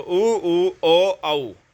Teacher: जिनका उच्चारण करते समय जो ओष्ठ जो है आपके गोल हो जाते हैं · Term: वर्तुल स्वर